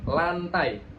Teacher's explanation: Nah, lidahnya itu nempel di bagian gusi atas. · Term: huruf L